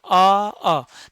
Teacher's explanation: देखो आ का उच्चारण करते हैं तो इसमें भी हमारे ओष्ठ है ना वो गोल नहीं होते हैं। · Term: अ वृत्ताकार